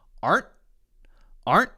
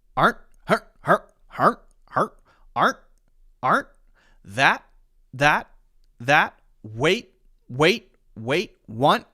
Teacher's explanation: it's very sudden so the bit of a push from the diaphragm and a sudden stop of the voice very quick that gives it that signature sound and it is an identifier of a t there and it's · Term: stopped T sound